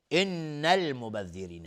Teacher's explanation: نون مشدد دو حرکت غنه میدیم